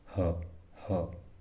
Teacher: छोटी जीभ से बोली जाने वाली जीभ के पिछले वाले हिस्से से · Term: काकल